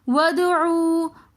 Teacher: ودعو کے اندر دال حروف قلقلہ میں سے آ رہا ہے تو اس لیے ہم ود قلقلہ کریں گے دال کے اوپر. ودعو عو کے اندر واو ساکن اس سے پہلے پیش ہیں تو حروف مدہ ہونے کی وجہ سے ہم اس واو کو تھوڑا سا کھینچ کر پڑھیں گے.